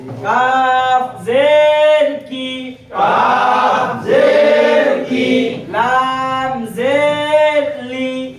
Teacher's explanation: জিহ্বার গোড়া হইতে একটু আগে বাড়াইয়া তারপর উপরে তালুর সঙ্গে লাগাইয়া একটি হরফ উচ্চারিত হওয়া